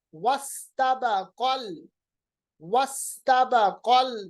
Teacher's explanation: काफ को आपने डायरेक्टली लाम के साथ मिलाया, तो बीच वाला जो है हमजतुल वसल है ये गिर गया